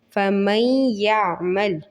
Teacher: ملایا بھی ہے اور ناک میں آواز بھی لے کے گئے ہیں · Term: ادغام ود غنہ